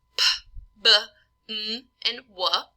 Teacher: We have bilabials, which are the two lips coming together for sounds like P, B, M, and W